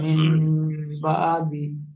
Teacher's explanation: নুন সাকিনের পরে বা এসছে, তাই নুন সাকিনকে মিমের দ্বারা পরিবর্তন করে একালিক পরিমাণ গুণনা করে পড়তে হবে, একে ইকলাব বলে।